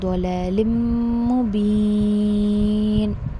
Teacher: جب آپ ضلال پڑھنے جاتے ہو لام کو موٹا نہیں کرنا ہے